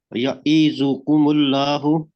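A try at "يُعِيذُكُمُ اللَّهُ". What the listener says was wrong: یا ای نہیں پڑھیں گے اسے، یعیذکم اللہ.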